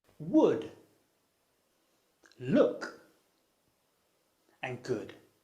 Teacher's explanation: in this case your tongue is close to the top and near the back of your mouth · it's a vowel sound and it's technical name is the near close near-back vowel